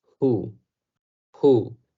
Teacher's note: nada más soplando un poco de aire, como el sonido que llega a ser la letra H por sí sola algunas veces, y luego el sonido U, who, who, casi como una J en español.